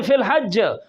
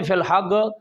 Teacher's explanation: مصر والے کئی علاقے رورل ایریا کے ہیں وہاں جیم کو گاف پڑھتے ہیں